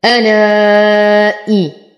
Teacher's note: ألائي حرف مد بعده همز في كلمتين فالمد جائز منفصل يمد بمقدار 6 حركات